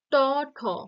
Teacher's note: ট, ঠ মূর্ধাতে টাচ করছে, তাই এই ট, ঠ মূর্ধন্য